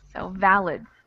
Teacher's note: I think this second I becomes a schwa.